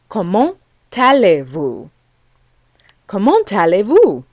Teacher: the consonant at the end of the word actually attaches itself to the following word.